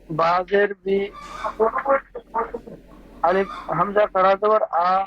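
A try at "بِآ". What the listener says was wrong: আর একটু টান দিয়ে বলেন একালি টান একালি টান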